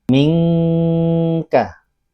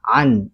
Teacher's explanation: Ikhfa itu tidak dibaca jelas nun sukun atau tanwinnya, melainkan dibaca samar, tidak jelas dan tidak hilang.